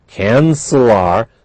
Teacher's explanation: they're pronounced together they're linked but they are not Blended